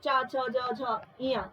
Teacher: और जबकि हम बात करें चा वर्ग, तो दोस्तों ये चा वर्ग तालव्य से या तालु से बोला जाता है